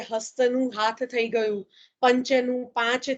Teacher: પછી સંયુક્ત વ્યંજનો એકવડા બને છે